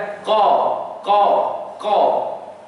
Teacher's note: Jadi huruf qaf ni keluar daripada hujung anak lidah kita. Ni hujung sekali.